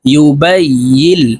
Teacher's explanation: এই ইয়া তাসদিদ ওয়ালা লামকে ধরবে, মাঝখানে জজমওয়ালা নুন বাদ পড়ে যাবে